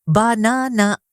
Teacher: For example, the word banana. The stress is on the second syllable. But-na-na, not ba-na-na.